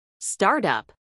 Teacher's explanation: Acentuación en la primera sílaba.